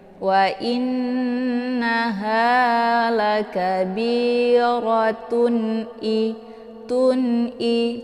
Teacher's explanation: Jadi izhar hakiki ini dibaca jelas ya, jelas bunyi tanwinnya. Wa innaha lakabiratun tun'i, cara bacanya ditekan saja ya, kemudian langsung masuk ke hamzahnya.